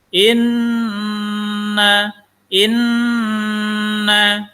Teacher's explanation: Inna, ini namanya gunnah musyaddadah, wajibul gunnah. Wajib gunnah, wajib dengung di sini. Karena nun tasydid. Inna, inna, nun tasydid.